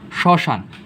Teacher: শ্মশান যখন আমরা উচ্চারণ করি তখন কি আমরা ম উচ্চারণ করি, করি না, কিন্তু এই তালব্যর সাথে ম ফলাটা যুক্ত আছে না।